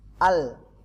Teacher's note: Lam itu adalah ujung lidah makhrajnya, ujung lidah bersentuhan dengan gusi bagian atas. Di gigi seri di atasnya ada daging, nah itulah makhraj lam.